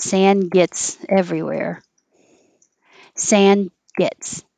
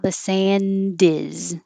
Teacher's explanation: you won't hear the d your tongue stays in the d position if it's at the end of a sentence or the next word begins with a consonant